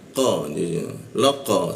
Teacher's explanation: pantulkan huruf qo itu lebih ke arah o dia qo laqo seperti itu.